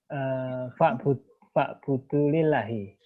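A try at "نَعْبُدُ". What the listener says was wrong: Na'budu ya, pakai nun ya. Na'budu.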